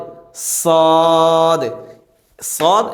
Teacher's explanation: জিহ্বার আগা সামনের নিচে দুই দাঁতের আগার সঙ্গে লাগিয়ে